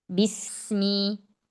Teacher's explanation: Ya, jangan tamtid bismi, la, bismi, ba satu harokat, sin rokhawah, kemudian mi satu harokat